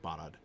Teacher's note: Technically, it's stress on the first syllable. But it's not a long vowel, really. They're both kind of short ah vowels there.